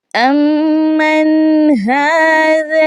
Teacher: نون ساکنہ کے بعد چونکہ ہا آ چکا ہے تو ہم نے اظہار کرنا ہے، اخفا نہیں کرنا